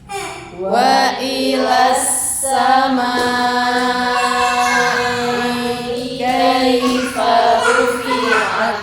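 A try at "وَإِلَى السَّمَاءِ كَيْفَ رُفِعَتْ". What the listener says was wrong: Hati-hati, jangan kecepatan dengan 4 sampai 5-nya ya.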